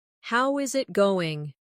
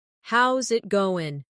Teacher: The is disappears, and the final G in going often softens. This is called connected speech.